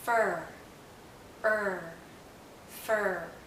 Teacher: this is a very close sound is a high vow so our mouth is very closed and our tongue is generally in a high position · For most vowels, the tip of our tongue is down and close to, if not touching, the back of our bottom front teeth. For the tip of our tongue is actually curled backward, and as it curls back, the central part of our tongue goes up. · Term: central vowel sound